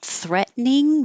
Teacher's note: this T changes to a d because it's between two voiced sounds